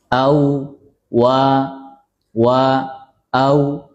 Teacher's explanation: Kalau yang kita ikuti yang standar, nafasnya tertahan karena bersifat jahar. Kemudian suaranya lepas karena rakhawah ya, suaranya mengalir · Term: rokhawah